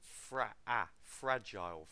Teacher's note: Stress on the first syllable and it's a ah sound. I've got a lot of you saying fragile, it's fragile, and just make sure you get the ah sound correct.